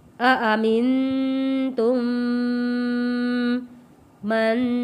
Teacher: نون ساکن پہ غنہ ادا کرنا ہے۔